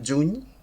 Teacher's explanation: Òbviament la paraula juny seria una palatal sonora, juny, d'acord?